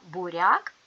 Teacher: в слові буряк буква я стоїть в середині складу і позначає один звук а пом'якшує попередній приголосний р